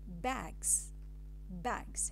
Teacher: the final S of the plural form changes to Z because of the previous voiced consonant G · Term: progressive assimilation